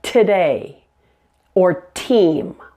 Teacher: your tongue touches the alveolar Ridge right here the alveolar Ridge is the bony hard area just behind your